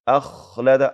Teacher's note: ته به ټکان نه ورکوو اخ قلقله به نه کوو اخلده اواز جاری وي چونکې خا کې د رخوت صفت ده او د رخوت صفت اثر دا وي چې اواز باید جاری